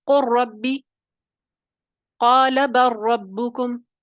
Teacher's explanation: لام جو ہے اس کی آواز جو ہے وہ غالب نہیں رہی، اکٹھے جو تام ہو گیا اس میں ادغام۔